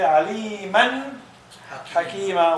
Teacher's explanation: We make the nun clear. That's why it's called izhar.